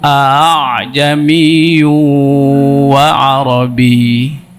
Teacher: Sekarang tashil. A yang kedua itu nggak jelas.